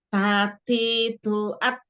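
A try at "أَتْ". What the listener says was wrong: jadi e lidahnya Enggak usah keluar kan tadi makroj hurufnya kan ujung lidah bertemu dengan tempat tumbuh busi atas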